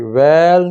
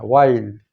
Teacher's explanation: آواز پہلے اوپر جائے گی پھر نیچے کو آئے گی، وائی وائی، ویل نہیں پڑھنا، اس کو وائل پڑھنا ہے، وائل۔ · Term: لین